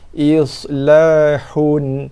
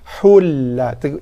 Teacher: tanwin jumpa lam, idgham bila gunah. Kita idghamkan daripada bacaan asalnya dibaca dengan islahun, hun kepada hulla. Idgham pada lam bila gunah tanpa dengung. Islahul, jaga ha bukannya hul, bukan hul tapi hul.